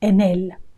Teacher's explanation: You link the N to the E.